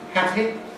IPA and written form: ˈhæpi (happy)